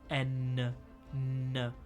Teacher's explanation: We say N by making a like solid like connection from the tip of our tongue to the top of our mouth, like N. Whereas like le petit pont is much more of a nasal sound.